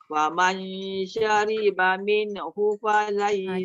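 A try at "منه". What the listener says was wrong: Jaga min. Jangan buat mina. Mina. Kan. Minhu fa.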